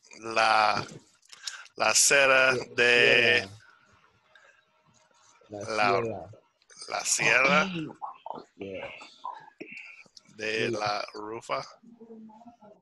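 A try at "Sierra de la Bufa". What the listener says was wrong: No, that's a la UFA, a B. B-U-F-A.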